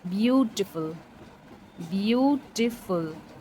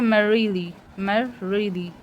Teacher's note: sixth है डक्टाइल, also known as डक्टिलिक फूड, consist of one stress syllable followed by टू unstressed syllables